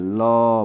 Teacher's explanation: तो ल जो होता है वो पार्श्विक होती है। ल बोलेंगे तो साइड से हवा निकल जाएगी।